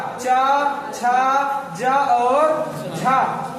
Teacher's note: जो आपके चा वर्ग के चा, छा, जा और झा वर्ण हैं, इन्हें स्पर्श संघर्षी व्यंजन भी कहा जाता है